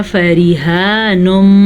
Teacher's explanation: را زیر کی صورت میں باریک پڑھی جاتی ہے